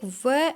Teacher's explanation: केवल एक व ऐसा वर्ण है जिनका उच्चारण स्थान दंत ओष यानी दंत और ओष दोनों से होता है